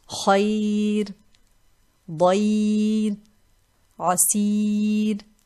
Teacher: The Ra in this case has tarqeeq no matter what kind of vowel precedes it. So this ya, if it is followed by this Ra and we are stopping, then we will always read this Ra light with tarqeeq.